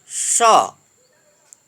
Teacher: जिसको हम तालव्य बोलते हैं क्योंकि इसका उच्चारण स्थान तालु है